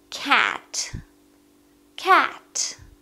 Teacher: это звук между а и э для этого нужно широко открыть рот и представить что-то противное и говорить Cat Cat между а и